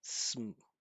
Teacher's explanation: Most of the time, right, it can change, but almost always a native speaker is not going to say some. They're just going to say sm.